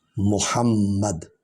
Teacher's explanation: ربک ربک، ربکا نہیں پڑھنا، ربک والملک صفا صفا، وجاء ربک والملک، وا جو ہے حرف شفوی ہے، ہونٹوں سے ادا ہوگا، میم بھی ہونٹوں سے ادا ہوگا، دونوں جب ہونٹ ملتے ہیں تو میم ادا ہوتا ہے